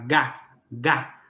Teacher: a língua lá no fundo, né, ela se eleva, ela vai tocar o que a gente chama de véu palatino, vai impedir a passagem do ar, depois você deixa e faz o Gá, né?